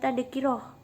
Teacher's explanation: Pada kata di atas huruf ta marbutah ketika waqaf berubah menjadi ha.